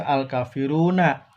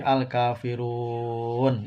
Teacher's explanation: Nunnya dimatikan ya, ini namanya diwakafkan.